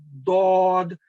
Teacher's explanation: दाद जो है जुबान के बायां और दायां किनारे जो है ऊपर वाली दाढ़ों को अगर आप लगाएं तो फिर ये हरफ अदा होता है दौद, ये भी भारी आवाज में अदा होता है।